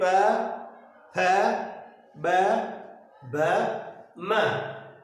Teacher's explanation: होठ जो आपस में ऊपर वाला और नीचे वाला औष्ठ जो आपस में क्या कर रहा है? स्पर्श हो रहा है, और स्पर्श होने के कारण इनकी ध्वनि का निर्माण हो रहा है, उत्पत्ति हो रही है। · औष्ठ्य तात्पर्य होंठ से है, अर्थात हमारे जो होंठ होते हैं औष्ठ, यानी कहीं ना कहीं इनका उच्चारण करने पर होठों का एक रोल होता है, ठीक है, और होठों के द्वारा ही इनका उच्चारण जो किया जाता है, बोलते हैं प फ ब भ म। कहीं ना कहीं इनका उच्चारण करने पर औष्ठ जो आपस में मिलते हैं, आपस में स्पर्श करते हैं, स्पर्श करके ध्वनि का निर्माण करते हैं। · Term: औष्ठ स्पर्श व्यंजन